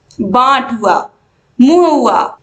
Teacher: आप देखोगे इसमें नाक से ध्वनि ज्यादा निकलती है। इसके अलावा बाट हुआ, मुंह हुआ, इसके अलावा दोस्तों चांद हुआ, ये सब में किसका प्रयोग हुआ है, अनुनासिक का प्रयोग हुआ है।